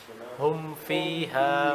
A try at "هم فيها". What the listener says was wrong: Good. Good. Good.